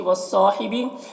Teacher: صاد کو پر پڑھنا ہے، حروف مستعلیہ میں سے ہے اور الف مدہ ہے یہاں پر۔